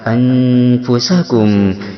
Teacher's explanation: Kemudian yang kedua ikhfa ausat, yaitu ikhfa pertengahan samar dan dengungannya seimbang sehingga bunyinya mendekati an